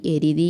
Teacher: ആണ് പൂർവ്വപദം കേവല ധാതു ആണെങ്കിൽ ഉത്തരപദാതി ഇരട്ടിക്കില്ല അപ്പൊ എരി അധികം തി എരിതി എന്ന് പറയുമ്പോൾ തകാരം അവിടെ ഇരട്ടിക്കുന്നില്ല